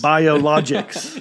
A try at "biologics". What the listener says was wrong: you're putting the emphasis on the wrong letters